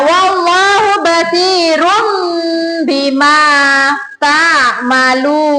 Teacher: Yang kelima, hukum bacaan tajwid yang ada di surat Atin adalah mengubah suara N menjadi M atau iklab. Nun sukun atau tanwin dibaca iklab jika bertemu dengan huruf ba